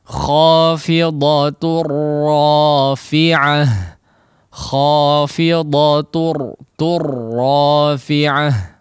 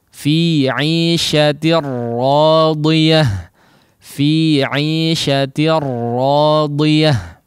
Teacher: diidghamkan, dileburkan kepada huruf lam ataupun ra tanpa disertai dengan gunnah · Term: idgham bila gunnah